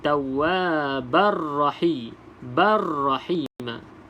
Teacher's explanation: Idgham bila gunah. Kita masuk tanpa dengung